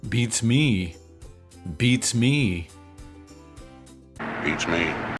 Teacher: the stress is always on me which is also long